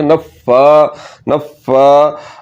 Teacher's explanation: فا مشدد ہے تو آپ نے پڑھنا ہے نفا نفا نفا، فا کے اوپر کھڑا زبر لمبا کریں گے